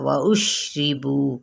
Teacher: را کے نیچے زیر ہے تو باریک پڑھیں گے